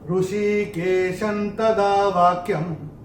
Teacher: तो अनुस्वार के बाद अगर त थ द ध आता है या न आता है तो अनुस्वार का उच्चारण होगा न।